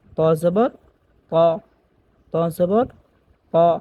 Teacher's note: ত হরফটা হচ্ছে মোটা হরফ। ত আমরা উচ্চারণ করব মোটা করে